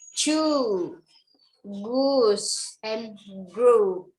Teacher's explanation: Jadi U-nya di ujung agak sedikit panjang karena ini long vowel.